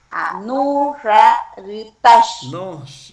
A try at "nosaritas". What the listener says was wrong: No ra. Es sa. No sa ritas.